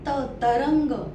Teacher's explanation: त च्या ओळीचा उच्चार थोडासा पुढे होतो